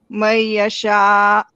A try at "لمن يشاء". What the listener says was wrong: For this one, remember, we don't pronounce the noon. So limayasha. You did it over here, but not here. So limayasha.